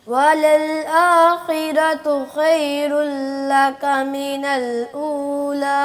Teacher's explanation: दो जगह पे रा आई है, दोनों जगह पे रा पुर है, तो वलल आखिरा यहाँ पे भी पुर है, खैरु यहाँ पे भी पुर है।